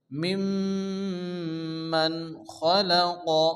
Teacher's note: নুন সাকিনের পরে ইজহার হালকি 6টি অক্ষর, অর্থাৎ হামজা, হা, আইন, হা, গাইন, খ, খ আসছে, এখানে বিনা গুন্না তাড়াতাড়ি পড়তে হবে।